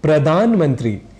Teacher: धा की जगह डा यह बोल जाया करते हैं